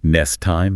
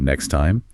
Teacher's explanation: consonant clusters are often reduced in fast speech, like saying nest time instead of next time